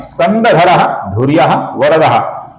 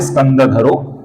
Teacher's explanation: इन तीन नामों के अंतिम अक्षर के आगे व्यंजन आने के पश्चात इस विसर्ग का ओ ऐसा उच्चारण हम करते हैं। अर्थात स्कंदधरा का बनता है स्कंदधरो।